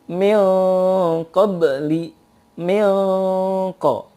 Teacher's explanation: menghadapi qaf eng dan juga ditebalkan